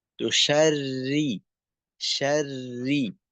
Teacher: সময় একটু প্রভাব পড়ে বা অভ্যাসগত কারণেও হয়ে যায়। তোশাররি শাররি রটা একটু মোটার দিকে চলে যাইতে চাই এখানে